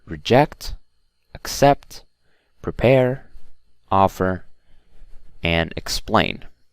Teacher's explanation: all of the other words are stressed on the second syllable except for offer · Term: word stress